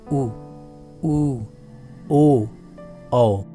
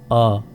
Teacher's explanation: जब स्वरों के उच्चारण के दौरान होठों को गोल कर लिया जाए तो इन्हें वृत्तमुखी या वृत्ताकार स्वर कहते हैं